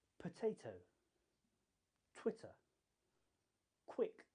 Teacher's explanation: when you say these sounds a puff of air should come out of your mouth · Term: aspirated